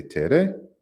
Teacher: this kind of short e sound right here we see that the first one is a low tone so we say Tere and the last one has a high tone · the first one is a low tone. So we say tere, and the last one has a high tone. So we have the line going down here towards the right, and then we have the for the low tone, and then for the high tone we have that little line going up.